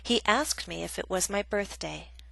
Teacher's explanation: Example B is a reported question, a statement, so we have falling intonation, which means our voice goes down.